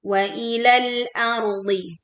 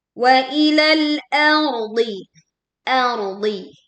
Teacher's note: Wa ilal, tekan lam sukunnya. Hamzahnya tipis kemudian ro-nya tebal, kemudian dhad ini tebal juga.